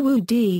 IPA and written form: ˈwuʷd (wooed)